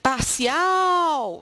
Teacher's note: Parcial, se você chamar a palavra parcial com carinho, afeto, dedicação, você vai perceber que existe um prolongamento no ao. Parcial é justamente essa sílaba final que é identificada como a sílaba tônica